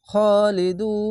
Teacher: শেষ অক্ষর সাকিন দিবেন তিন আলিফ টেনে পড়বেন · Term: মাধ্যে আরজি